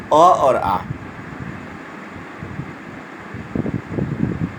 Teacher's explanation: कंठ से उच्चारण स्थान जो माना गया है वह स्वर में होता है अ और आ।